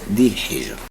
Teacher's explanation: الراء هنا مرققة لأن قبلها حرف مستفل ساكن، وقبل هذا الحرف المستفل ساكن حرف مكسور